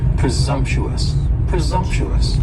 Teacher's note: presumptuous has four syllables and the stress is on that second syllable and the S almost sounds a little more like a z